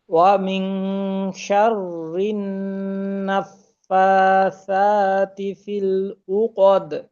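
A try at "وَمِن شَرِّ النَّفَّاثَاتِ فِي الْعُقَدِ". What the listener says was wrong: জি, এইখানে আইনের উচ্চারণটা আরেকটু চাপ দেওয়া দরকার। রু, রু কদ, আই রু। কদ।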